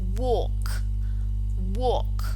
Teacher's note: The stem ends in this voiceless velar plosive